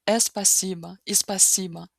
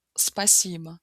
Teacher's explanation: começa com s, sem sons adicionais no início